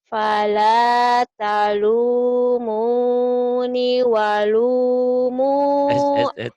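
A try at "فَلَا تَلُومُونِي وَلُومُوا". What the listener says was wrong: Ninya kan panjang, Neng.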